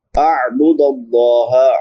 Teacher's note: عین ہے، حلق کے درمیان سے ادا ہوتی ہے